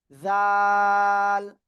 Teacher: জিহ্বার আগা উপরে 2 দাঁতের আগায় লাগাবেন, লাগিয়ে একটু নরম করে আপনাকে 3 আলিফটা নিয়ে অক্ষরটা উচ্চারণ করতে হবে।